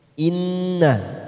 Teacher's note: bacaan gunnah kita tekan 3 ketuk siap masuk ke huruf nun